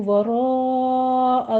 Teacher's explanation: वराअ में रा मुफ़ख़म पढ़ते हुए मद्दे मुत्तसिल वाजिब करेंगे, 5 काउंट करना है। ज़हरिही है तो यहाँ पे हम वक्फ करते भी हा की साउंड लेकर आएंगे।